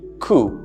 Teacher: this comes from a greek western or rather latin origin and therefore the p is silent here it's supposed to be coup